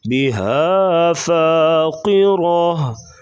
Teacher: ہا کو گلے سے ادا کریں گے